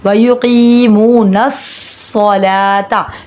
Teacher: نون کو صاد سے ملائیں گے۔ صاد سیٹی والا حرف ہے، صاد حرف مستعلیہ ہے، صاد کو آپ نے پر بھی پڑھنا اور سیٹی کے ساتھ بھی ادا کرنا ہے، اور اس کے ساتھ یہاں پر تشدید آ گئی تو یہاں پر آپ نے جماؤ بھی کرنا ہے۔